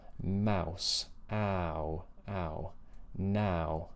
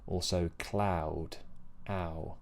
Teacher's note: think about the horizontal space and then the lips round towards the end.